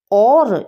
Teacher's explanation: जब भी आप और शब्द का उच्चारण करते हैं ना अपने मुख विवर से तो कंठ से भी ध्वनि निकलती है और थोड़े से आपके होठों से भी यानी कि होठ भी आपस में थोड़े से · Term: कंठ ओष ध्वनि